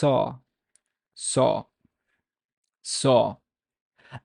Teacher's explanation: you have to put more emphasis on the ah sound make it more back try to push it more back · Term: letter sod